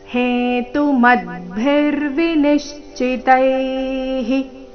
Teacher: ವಿನಿಶ್ಚಿತೈಹಿ ತೈ ನಂತರ ವಿಸರ್ಗದ ಉಚ್ಚಾರಣೆ ಹಿ ಎಂದು ಬರಬೇಕು